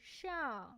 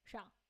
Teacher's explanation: So in natural speech, we don't actually say 上. We don't really say a super clear fourth tone here. We just say 上, a neutral tone.